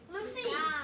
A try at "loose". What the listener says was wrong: No, that's silent, right? So it's just loose.